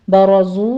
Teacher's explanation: برزو میں را بھی مفخم ہے، آگے زئی کی سیٹی کی آواز کے ساتھ واو مدہ ادا کیجئے، دونوں ہونٹوں کو گول کر لینا ہے، 2 کاؤنٹ کرنا ہے۔